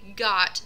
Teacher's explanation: So got, g, is a sound produced in the back of the mouth. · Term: fronting